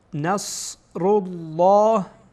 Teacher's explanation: لام در اینجا پر خانده میشه